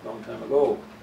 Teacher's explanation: Second syllable is a strong one. So the first one is weak.